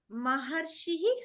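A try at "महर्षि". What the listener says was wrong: మహర్షి దీర్ఘం ఉండదు, మహర్షి కాదు, మహర్షి. దీర్ఘాలన్నీ హ్రస్వాలు అయిపోతాయి.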